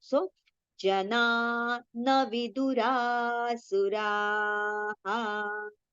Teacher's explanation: while reciting this visarga, ra we have to prolong, and then we have to take the visarga sound.